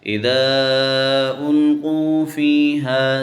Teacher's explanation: فا کے آگے یا ہے تو ہم اس کو تھوڑا سا کھینچیں گے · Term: یا مدہ